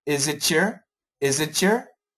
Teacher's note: when we have the t and the y next to each other we can get a ch sound